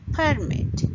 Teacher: Permit, which means to allow some event to occur, if we put the stress on the first syllable, it will become permit